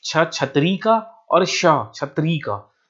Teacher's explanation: छत्तीसगढ़ में होता क्या है कि छ छत्री का और श छत्री का इन दोनों का जो उच्चारण है हम एक तरीके से करते हैं